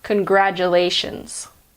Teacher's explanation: Congratulations. Although sometimes in American English, the T is pronounced j.